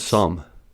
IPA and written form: sʌm (some)